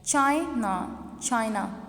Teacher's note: stress हमने first one syllable पे दिया